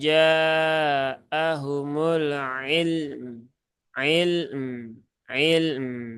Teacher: Kalau ilm lamnya jadi qalqalah, kemudian sifat rokhawahnya belum tertunaikan, belum tertunaikan. Nah, maka lamnya alirkan sebentar, kemudian pindahkan ke mim